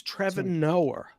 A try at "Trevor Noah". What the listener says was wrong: We add R's where there's not supposed to be R's.